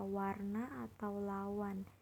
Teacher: Dalam bahasa Indonesia terdapat dua fonem semivokal, yaitu W seperti pada kata warna atau lawan diucapkan dengan bentuk bibir agak bulat